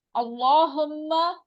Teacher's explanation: लामे जलाला है अल्लाहुम्मा में, तो उससे पहले जबर है तो इसलिए ये मोटा पढ़ा जाएगा।